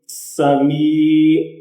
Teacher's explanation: اب اس میں یا حروف مدہ ہے، اس کو ایک الف کی مقدار لمبا کر کے پڑھنا ہے